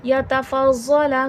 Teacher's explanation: ज़ौत हुर्फ़ मुस्तालिया है, मोटा करके पढ़ा जाएगा